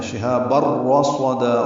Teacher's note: تنوین کے بعد رو آنے کی وجہ سے ادغام ہے اور یہ ادغام کامل ہے۔ شہاب الرصدا، را صاد دونوں پر ہیں اور دا الف مدہ مد عوض ہو۔